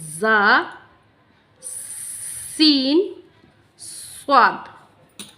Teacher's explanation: दोनों दांतों को मिला लेते हैं और ज़बान की नोक को उनके बीच में रखते हैं तो वहाँ से अदा होता है ज़ा, सीन, स्वाद · सीटी की आवाज़ आनी चाहिए इसमें।